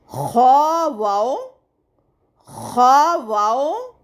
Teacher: خا بھی پر یعنی موٹا پڑھے جانے والے حروف میں سے ہے، تو اس کو ہم موٹا اور حلق سے ادا کریں گے